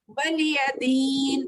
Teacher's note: वलिया को नहीं खींच रहे, हरकत है पूरे